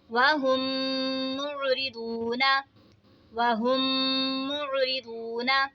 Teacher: یہاں پہ دیکھیں میم ساکن کے بعد دوسری میم آ رہی ہے تو ادغام شفوی ہوگا، یعنی ہم نے یہاں پر غنہ کر کے پڑھنا ہے. واو ساکن سے پہلے پیش ہے تو واو مدہ ہوگا، اسی لیے ہم نے اس کو کھینچ کے پڑھا